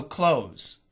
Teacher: Don't trust that D-T-T-H. But the Z sound allows us to cancel the TH.